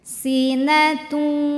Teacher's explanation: S seperti huruf s biasa desis kayak ular